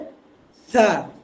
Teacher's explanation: কোন জায়গা থেকে আসবে তার উচ্চারণটা হবে জিহবার আগা সামনের উপরের দুই দাঁতের আগা আবারও বলছি জিহবার আগা সামনের উপরের দুই দাতের আগা এই জায়গা থেকে উচ্চারণ হবে